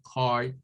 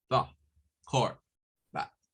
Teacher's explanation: es un sonido que está parecido a una A, pero no es así hasta abajo, como decir A. Es un poquito menos bajo lo que tenemos que abrir la mandíbula.